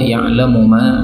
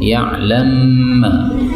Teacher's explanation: Ayat kedua ya'lamu ma, mim ketemu mim boleh idgham